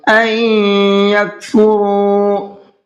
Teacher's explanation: نون ساکن کے بعد میں یا ہے، تو تھوڑا سا غنہ کریں گے اور را کو کھینچ کر کے پڑھیں گے